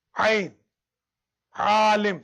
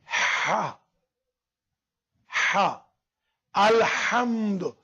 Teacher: Ha and ain from middle of throat. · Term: Wasatul halq